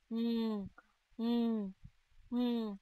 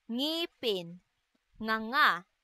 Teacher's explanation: may tunog na isinasaad sa paraan ng pailong at sa punto ng pangalangala